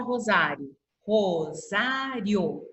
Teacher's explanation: O I e o O ficaram juntos, porque o som deles é um pouquinho mais fraco. Então, um som não abafa o outro, tá? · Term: ditongo